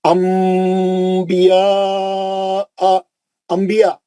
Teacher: دیکھیے نون ساکن کے بعد با آ گیا. اب ہم نون کو میم سے پڑھیں گے. انبیاء, انبیاء میم سے بولتے ہیں ہم, انبیاء نہیں بولتے. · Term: اخلاب